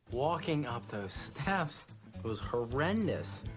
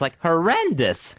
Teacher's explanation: he goes high in the middle of a word with multiple syllables